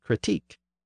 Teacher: critique came in over a century later and it retains its original stress on the final syllable